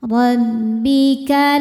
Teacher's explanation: Ro dibaca tafkhim karena barisnya fathah, maka ro dibaca tebal.